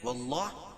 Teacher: اللہ کے لام سے پہلے زبر ہے تو اللہ کا لام پر پڑا جائے گا